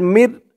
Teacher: এই র ধরবে এই নুন ধরবে না মিম র জের মির এখানে ইজহার গুন্না হবে না স্পষ্ট করে পড়তে হবে